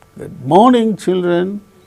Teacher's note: we can notice the falling tone occurring on the word morning